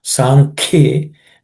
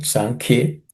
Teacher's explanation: again ka here is aspirated